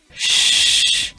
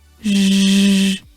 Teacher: /ʃ/ is voiceless post-alveolar fricative /ʒ/ is voiced post-alveolar fricative